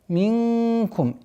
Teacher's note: ихфа в размере 2 огласовок, назализацию удерживаем